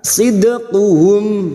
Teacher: dal sukun yang mati asli di tengah kalimat qalqalah sughra jangan lupa dipantulkan